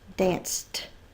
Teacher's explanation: e d following an unvoiced consonant is unvoiced the ed is going to say the t sound